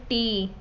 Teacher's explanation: इसमें ज़बान की नोक और लसम यानी मसूड़ा जो होता है उससे रोका जाता है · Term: लसवी